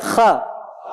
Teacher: Terbuka tanpa monyong, bukan kho, nggak gitu.